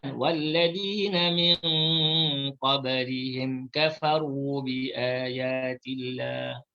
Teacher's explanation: Iaitu nun mati bertemu dengan qaf. Qaf ni huruf yang tebal, maka dengung tu ditebalkan. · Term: ikhfa hakiki